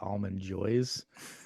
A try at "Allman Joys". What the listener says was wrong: Without the D.